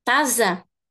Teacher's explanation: So the S is between vowels, so za, taza.